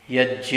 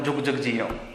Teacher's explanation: य के स्थान में ज का उच्चारण कर देते हैं।